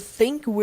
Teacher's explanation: língua na ponta do dente ali sim dá aquela sopradinha Sutil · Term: som do th